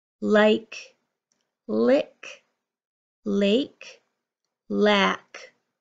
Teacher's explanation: Lack has an ah sound, and my mouth is even taller compared to lake.